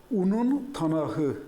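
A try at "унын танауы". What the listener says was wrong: Танауэ. Танауэ. Там же танау. «Уэ» на конце. Танауэ. Танау. Там на конце звук «в», который обозначается буквой «у». Танау.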